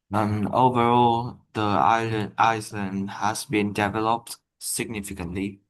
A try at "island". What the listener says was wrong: By the way, it's pronounced that the S is silent. Okay, so it's island, island. Okay, not Iceland or Island, anything like that. Island is pronounced with a silent S.